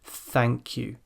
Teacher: the tongue is far out it's clamped between teeth and the breath is coming through the teeth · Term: unvoiced sound, unvoiced th sound